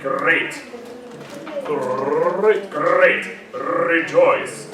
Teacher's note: It's the rolled, long, rolled R.